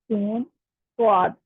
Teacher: सीटी वाले हरूफ जा सिन स्वाद, इनमें सीटी की आवाज आती है बाकायदा। ठीक है, और स्वाद जो है इसमें से पुर हरूफ में जो पूर्व पढ़ा जाने वाला हाथ है स्वाद।